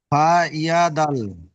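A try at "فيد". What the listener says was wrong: ফা ইয়া, না ওটা দাল নয়।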